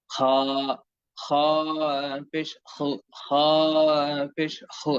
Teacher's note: খ অক্ষরটির উচ্চারণ হয় মোটা, জিহ্বার গোড়া হালকা কিছুটা উপরের দিকে উঠিয়ে সুন্দর করে এবং আওয়াজ এবং কণ্ঠস্বর ভারী এবং মোটা করে দুই ঠোঁটকে কিছুটা সংকীর্ণ রেখে খ খ পেশ খ খ পেশ খ।